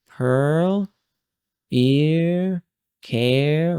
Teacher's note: we're not making a very strong R, we're making a weak R.